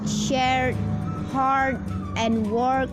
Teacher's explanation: most Brits will not pronounce the R sound but most Americans will